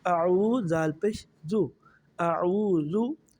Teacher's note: عین واو پیش او کو ہم 1 الف کے برابر لمبا پڑھیں گے یا الف مدہ کے برابر۔